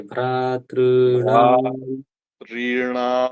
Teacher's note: भ के आ में जितना समय लग रहा है उतना ही समय ऋ में लगना चाहिए भ ऋणा देखो जुगाड़ लग गया तो अच्छी बात है तीन अक्षर है तीन तीनों लगातार दीर्घ है।